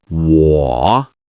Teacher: Perfect. This is a third tone, so your voice dips and then rises.